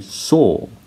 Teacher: So the R sound at the end is not pronounced.